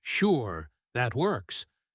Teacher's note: add a pause before it and let your voice rise slightly at the end like you have a hidden doubt. Notice how just changing your voice changes the entire meaning of the same three words.